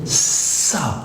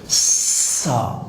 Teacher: اس کو نرم رکھنا ہے اور یہ سیٹی کی آواز کے بغیر ادا نہیں ہوگا